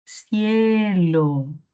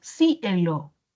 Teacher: mayor fuerza de voz en la vocal abierta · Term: diptongo